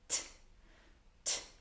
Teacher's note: I'm placing my tongue at the back of my teeth, but slightly up. So, where the teeth and the gums are kind of meeting, that point block the passage of air and then pull back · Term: clear t sound